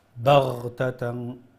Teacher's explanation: When you pronounce the ghain, ghain will be pronounced from the top of the throat